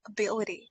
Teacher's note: So the stress should go on the second syllable. Ability. B I L should be stressed.